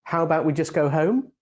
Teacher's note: the suggestion with the rising tone sounds more like a real question because it sounds more indirect and hesitant